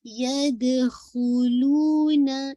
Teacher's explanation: آپ کا واو مدیہ ہے، آپ نے 2 کاؤنٹ پڑھنا ہے